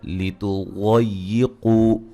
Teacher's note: ضاد کو موٹا ادا کریں گے اور قاف کو موٹا ادا کریں گے